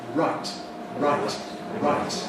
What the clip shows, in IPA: raɪt